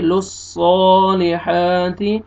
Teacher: عین کو اپنے مخرج سے صحیح ادا کرنا ہے وعامی لصو صاد کو موٹا کر کے پڑھیں گے